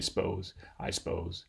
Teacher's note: you might delete the little schwa here in between the S and the P and just say suppose, I suppose. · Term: deletion